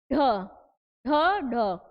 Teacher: पहले हमारी जीभ ऊपर जा रही है, मूर्धा को टच कर रही है और फिर उसके बाद झटके से नीचे आ रही है। तो क्षिप्त व्यंजन हमारे क्या हुए, ढ और।